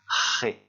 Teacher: On ne fait pas vibrer, sinon ça ressemblerait à un R français